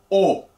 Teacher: labios estén de forma de círculo de un redondo escuchen o los labios están redondos y un poco cerrados